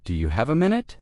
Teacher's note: The stress is on have and minute.